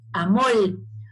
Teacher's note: esa abstracción ideal que tenemos en nuestra mente del fonema R, puede realizarse, como podemos escuchar en algunas canciones, como L